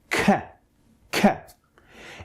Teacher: it is produced by keeping some air, gush of air, behind your tongue for a small instance and then letting it go, thus creating the sound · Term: plosive sound